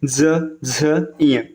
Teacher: इनके उच्चारण पर कंठ में कंपन होता है, मतलब जो स्वर यंत्र है, स्वर यंत्र इसमें कंपन होता है, स्वर यंत्र में कंपन होगा। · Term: सघोष व्यंजन